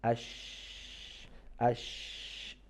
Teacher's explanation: it's not complete connection because the voice or the air flows between the connection of the middle part of our tongue and the hard palate